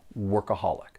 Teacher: there are four syllables and the stress is on that third syllable